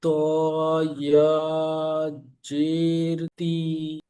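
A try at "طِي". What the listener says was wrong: জেরটা টানবে না, হারাকাত টান নেই, অক্ষর টান আছে, উচ্চারণের টান হবে। জি, এর উচ্চারণটা কিন্তু ই হবে।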